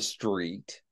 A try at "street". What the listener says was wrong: T is softer than that.